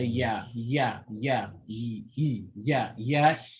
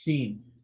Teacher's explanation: in a yeah there's a bit more distance from the top of your mouth than sheen so in sheen your mouth is actually a bit higher to